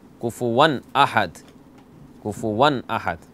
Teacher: احد، حمزہ ہے. تو تنوین کے بعد حمزہ ہے اور حمزہ حروف حلقیہ میں سے ہے، تو یہاں اظہار کریں گے، غنہ نہیں کریں گے. کفواً احد نہیں کہنا، کفواً احد، کفواً احد.